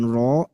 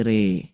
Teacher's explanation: Alif lam re, bukan ro tapi re. Kan kalau ro itu tebel, kalau re jadi tipis.